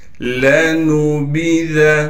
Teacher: ذال کو باریک کر کے نرم پڑھنا ہے